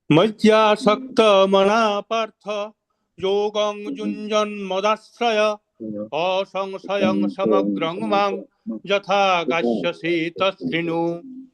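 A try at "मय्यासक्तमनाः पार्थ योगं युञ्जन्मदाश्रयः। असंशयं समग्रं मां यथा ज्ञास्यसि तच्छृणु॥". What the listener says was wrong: সুন্দর হয়েছে, শুধু আপনাকে লাস্ট একটু হ ইউজ করতে হতো প্রভুজি প্রথম লাইনের শেষে, আরেকবার বলুন।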